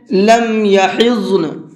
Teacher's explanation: ضاد کو پر کر کے پڑھیں گے، یعنی کہ تھوڑا سا موٹا کر کے منہ بھر کے پڑھیں گے، اور ضاد کے بعد میں نون ہے اور نون پر ہمیں وقف کرنا ہے اور اس کے اوپر زبر ہے، تو جب ہم وقف کریں گے تو نون کو بھی ساکن کر دیں گے، یہ ضاد بھی ساکن ہے اور نون بھی ساکن ہو جائے گا۔